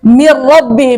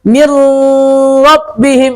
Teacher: Karena nunnya sudah hilang berganti ro. Ro enggak punya ghunah. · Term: idgham bila ghunah